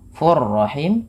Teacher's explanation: cara membacanya tanwinnya masukkan kepada huruf ro dan ditahan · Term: idgham bila gunah